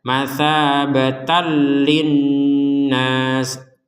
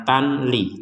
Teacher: Dan ya kalau ini disambung ya, dan di sini harokat fathatain tanwinnya bertemu dengan huruf setelahnya yaitu huruf lam, sehingga kita membacanya adalah dimasukkan tanpa dengungan